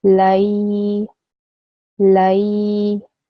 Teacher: I'll easen the lam sound into the ya. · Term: ya lean